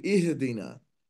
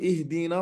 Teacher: اهدنا، هنا الهاء ساكنة، فلا كثير يخطئ ويقول اهدنا، يقلقل الهاء، والهاء ليست حرفا من حروف القلقلة